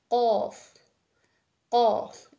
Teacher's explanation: अकसा लिसान जुबान की आपकी जो जड़ है कवे के करीब वाली नरम तालू से लगेगी तो आपका क अदा होगा